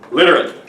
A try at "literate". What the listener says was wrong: Literate. Yes, kind of close. Literate. Give me a good R. Literate. Literate.